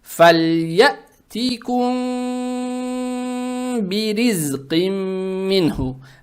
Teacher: Это ихфа шафауия. То есть букву мим в данном случае произносим скрыто, удерживая через нос